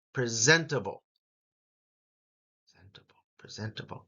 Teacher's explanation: Zent is what the second syllable sounds like, and that gets the emphasis.